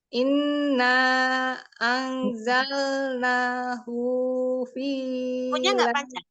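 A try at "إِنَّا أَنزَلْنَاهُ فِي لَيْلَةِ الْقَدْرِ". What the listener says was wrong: Hu-nya nggak panjang. Inna anzalnahu fi lailatul qadar.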